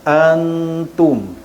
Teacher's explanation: huruf nun mati bertemu dengan huruf ikfa iaitu ta. Bacaan nun mati disembunyikan 50%, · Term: ikfa hakiki